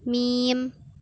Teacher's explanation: Kasroh panjang, vokal yang timbul karena lidah bagian depan digunakan. Letak bunyinya di atas, mulut tidak bundar dan majhul.